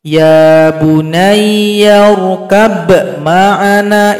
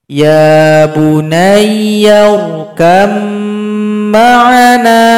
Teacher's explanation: Jadi ba ini enggak dibaca lagi karena dia telah gabung kepada huruf mim. Jadi kaf langsung loncat nanti kepada huruf mim.